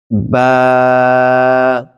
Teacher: বা হবে ঠোঁটের ভিজা অংশ থেকে